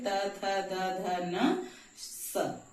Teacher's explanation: ये स दंत स कहा जाता है क्योंकि इसको बोलने में हमारी जीभ दांत के पास छूती है। जहां से हम त थ द ध बोलते हैं वहीं से हम स भी बोलेंगे, त थ द ध न स।